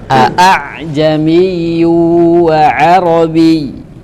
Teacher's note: Syu'bah membaca di kata ini dengan tahqiq. Apa tahqiq? Membaca jelas hamzah dua-duanya.